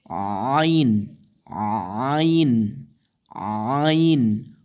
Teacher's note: আইন হলকের মধ্যখান হইতে